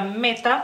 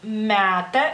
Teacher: es como más abierta es entre e y a